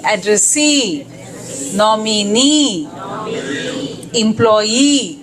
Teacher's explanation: The last syllable gets a stress.